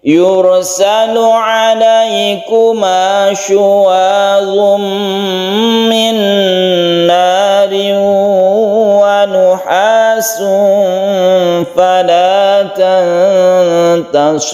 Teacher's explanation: ada tanwin bertemu dengan mim, idgham bi gunnah, nun bertemu dengan nun, idgham bi gunnah lagi, kemudian tanwin bertemu dengan waw, idgham bi gunnah lagi. Ini kita gunnahkan, kita panjangkan, ada 1 2 3, kemudian di sini ada ikhfa, kita panjangkan juga.